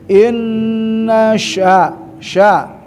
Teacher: nun bertasydid ya gunah musyaddadah tahanlah ya dua sampai tiga